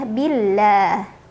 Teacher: ada lam jalalah yang dibaca secara tarqiq karena huruf sebelumnya yang ba berbaris kasrah, maka bacanya tipis ya